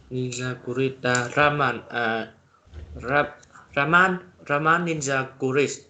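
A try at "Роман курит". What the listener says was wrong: Cái này họ đặt trọng âm sai. Bạn này phải tên là Roman. Raman là tiểu thuyết.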